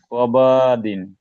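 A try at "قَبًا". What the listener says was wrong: কবা এরকম লম্বা কেন? কবা না, কবা দিন।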